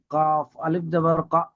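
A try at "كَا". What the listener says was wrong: বলছেন, কাব আলিফ জবর কা হয় না কাব আলিফ জবর কা টান দিয়ে বলতে হয়? ভুল হচ্ছে এই হরফে মাদ্দা গুলো। কেন হরফে মাদ্দার ভুলটা হবে কেন? মাদ্দাটার ভুল হরফে মাদ্দা তো সেই প্রথম সবকে হয়ে গিয়েছে, এখন হরফে মাদ্দাটা ফের বলতে হবে কেন?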